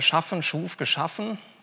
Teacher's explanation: Da gehen Sie irgendwie vom A zum U und wieder runter. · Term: Vokalstufen